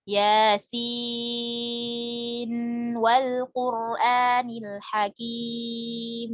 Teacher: Jadi diizharkan nunnya, enggak diidghamkan kalau dari Hafiz.